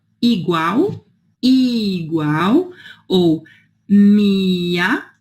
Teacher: Em português a gente tem o I, né, bem fechadinho.